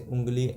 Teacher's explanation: यानी जब भी देखो उंगली बोल रहे हैं ना, तो मुख से तो हवा निकल ही रही है, आवाज़ जो निकल रही है हवा, और नाक से भी हवा निकल रही है, और यानी नाक से भी आवाज़ आ रहा है, मुख से भी आवाज़ आ रहा है, तो दोनों से मिलकर जब आवाज़ आता है नाक और मुंह से, तो उसको उसके लिए चंद्रबिंदु लगाते हैं। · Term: अनुनासिक